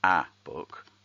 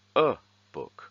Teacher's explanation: they say 'a [/ə/] book' - which is the schwa sound